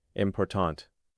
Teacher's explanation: The word important stresses the second syllable.